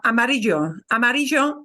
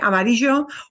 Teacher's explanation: I have a tiny bit of a j but really really cut short